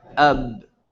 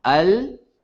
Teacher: you're using your lips for ba, and you're using the tip of your tongue for lam